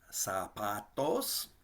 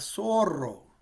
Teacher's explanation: in front of an a or an o or a u it's going to make the sound of s like in english like sue not a z